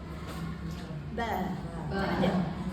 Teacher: tempatnya apabila bibir bawah bertemu dengan bibir atas ba. Jadi macam tadi apabila bibir >> bawah bertemu bertemu bibir atas. · sekarang kita masukkan pula ba keluar daripada kedua-dua bibir